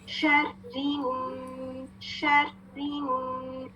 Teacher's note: शीन जब हम अदा करेंगे तो उसकी शावरिंग साउंड आनी चाहिए